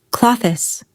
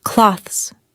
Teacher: Many learners add an extra syllable, like clo-thes. Instead, native speakers usually say clothes.